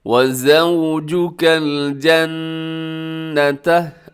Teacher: نون مشدد ہے تو آپ نے غنہ کرنا ہے، آواز کو ناک میں لے کے جانا ہے.